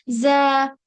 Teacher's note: उसके बाद ये ज़, ज़ में क्या होता है, सीटी वाली आवाज आती है और लाइटली पढ़ते हैं, ज़।